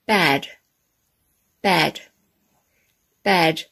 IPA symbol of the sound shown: æ